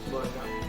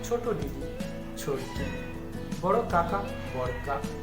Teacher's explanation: প্রত্যেকটার ক্ষেত্রে দেখো শেষ থেকে একেবারে ব্যঞ্জন ধ্বনি লোপ পেয়েছে, সেই জন্য এদেরকে বলা হয় অন্ত ব্যঞ্জন লোপ।